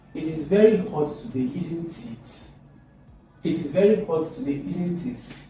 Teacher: Falling intonation when the speaker expects agreement.